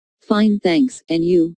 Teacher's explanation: notice the rising intonation on and you